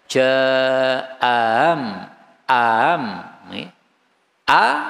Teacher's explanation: dan hamzah yang kedua dibaca tashil yaitu tidak begitu jelas a maka praktiknya adalah jaam am a ini tahkik aamah am